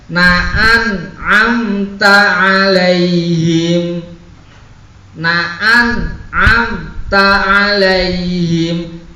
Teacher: nun mati ketemu ain, idhar dengan sangat jelas